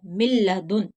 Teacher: नून की आवाज नहीं आनी चाहिए, मीम को लाम से मिलाना है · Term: इदगाम बिला गुन्ना